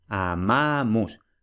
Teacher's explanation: en amamus tenemos ahí una sílaba ma, que es la penúltima, y que como tiene una vocal larga, la sílaba es larga, por tanto, la palabra es llana.